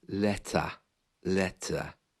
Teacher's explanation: the r is almost gone completely